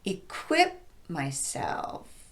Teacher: I would emphasize self just by elongating that syllable a bit more, but not by raising my pitch